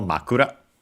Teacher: accented on the first syllable, makura. Then we have the object particle o.